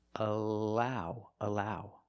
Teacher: the tongue is flat and straight it's not raised in the back it's not expanded at the bottom it's just straight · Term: light L